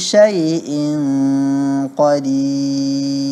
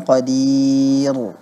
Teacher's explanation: Pada kata qadir, pada huruf ra, saat kita berhenti pada kata qadir, syai'in qadir, itu siogianya ditarqiqkan huruf ra-nya, ditipiskan